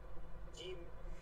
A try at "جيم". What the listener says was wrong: জিম টান আছে, জিমে টান আছে, জিম,